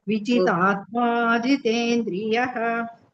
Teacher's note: Both the tas are dirgha there.